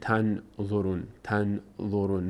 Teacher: باز هم نون از مخرج خودش ادا نمیشه از بینی ادا میشه میشه چی [موسیقی] تنظرون نون آخرم به خاطر وقف ساکن بشه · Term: اخفا